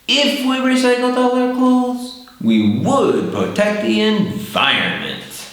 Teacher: in the first part we go up, and then in the second part we go down